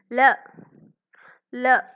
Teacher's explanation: நாவின் இரு பக்கங்கள் தடித்து மேல் பற்களின் அடியை தொடுவதால் லகரம் தோன்றும் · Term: மேல் நோக்கு லகரம்